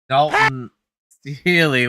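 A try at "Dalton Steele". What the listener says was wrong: You don't have to pronounce the E at the end. It's just Steel, but pretty good.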